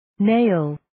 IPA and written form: neɪl (Nail)